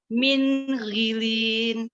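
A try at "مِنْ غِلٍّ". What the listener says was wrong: Ghilin. Jangan, ini nggak boleh nih. Ini kesalahan yang disebut tadi. Apa tadi kesalahannya? Memanjangkan mengisbakkan tanwin. Nah, ghilin. Ini nggak boleh.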